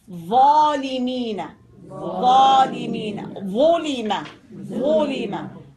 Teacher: The sound that comes out of it, of the elevation, is tafkhim, heaviness, heavy, heavy sound.